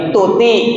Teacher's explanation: Huruf T, T itu aslinya kan tiny T ya, itu kan nggak keluar nafas kalau di Indonesia.